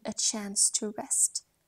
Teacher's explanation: Chance lifts the voice a little in its hopeful potential. To rest lets the voice settle gently down.